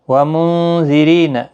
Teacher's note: نون ساکن کے بعد حروف اخفا کا زال آیا ہے، اخفا حقیقی ہوگا، را باریک پڑھا جائے گا، ری یا مدہ بھی ہے، ایک الف کی مقدار کے برابر کھینچ کر بھی پڑھیں گے۔